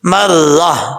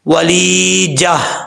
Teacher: وقف کرتے ہوئے گول تا کو ہا سے بدل دیں گے